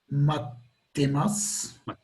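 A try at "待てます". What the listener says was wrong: So without the hard T though. T.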